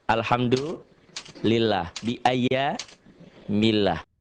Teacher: Lafaz Allah dibaca tipis berbunyi A, karena sebelumnya berbaris di bawah atau kasroh.